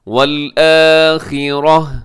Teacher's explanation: اگر گول تا پہ وقف کریں گے تو اس کو ہا کے ساتھ چینج کر دیتے ہیں